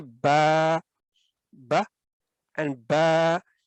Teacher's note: اور اس پچھلے حرف کی آواز کو یہ الف مدہ لمبا کرنے میں مدد دیتا ہے، اور کھینچ کر ادا کرتے ہیں اس کو 2 حرکات کے برابر، یا آپ کہہ لیں 2 سیکنڈ تک لمبا کر کے ادا کرتے ہیں